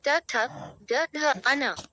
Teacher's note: मूर्धन्य रेट्रोफ्लेक्स ध्वनियाँ जो तालु के पिछले भाग मूर्धा से उच्चारित होती हैं